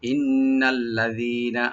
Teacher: নুন মুসাদ্দাদ ওয়াজিব গুন্না, এককালে পরিমাণ গুন্না করে, টান হবে না, শুধু গুন্না করতে হবে। ইন্না মিলাই পড়লে ইন্নাল্লাযীনা, আল্লাযীনা লাম ওপেন রাখবেন, জি একালে টানবেন, লাস্টের নুনে কোনো টান নাই।